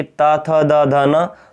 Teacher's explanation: ता वर्ग की, यानी कि ता थ द ध न, तो ये होता है दंत की